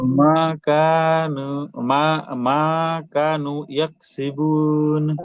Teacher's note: মা টান আছে, কা টান আছে, নু টান আছে।